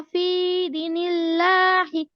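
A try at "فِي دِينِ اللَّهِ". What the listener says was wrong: আচ্ছা, এবার আমরা লাস্টের দিকে একটু খেয়াল করি আপু। এখানে আপনারটা হয়েছে ফি দিনিল্লাহ, মানে দালের মধ্যে যে টানটা আছে এটা মিস্টেক হয়ে গেছে, তাহলে ফি দিনিল্লাহি, ফি দিনিল্লাহি।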